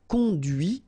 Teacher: And that's when you hear the difference between conduit, because remember, final T is not pronounced